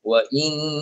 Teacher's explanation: pastikan nun sabdu tu wajibul gunnah dibaca 2 harakat